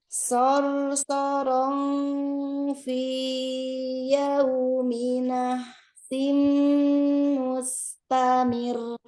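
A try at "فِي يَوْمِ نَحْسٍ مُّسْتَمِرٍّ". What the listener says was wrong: Yo, itu nggak sama temponya dengan yang pertama. Nggak sama temponya dengan yang pertama tadi ya, agak lebih lambat malah. Disamakan ya temponya ya. Jadi dua harokatnya stabil.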